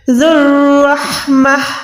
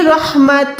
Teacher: ذو الرحمہ، ٹھیک ہے، رحمت نہیں بلکہ رحمہ، ہا جو ہے ساکن ہو گئی اسٹاپ کے ٹائم، وقف کے ٹائم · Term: ہا ساکن